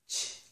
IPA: tʃ